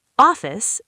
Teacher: The O is wide and open.